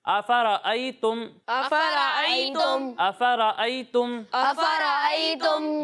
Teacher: حمزہ کی ادائیگی واضح ہونی چاہیے، اسے عین کے ساتھ تبدیل نہیں کرنا